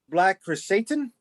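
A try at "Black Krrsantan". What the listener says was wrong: Santon. You gotta add an N in Santon.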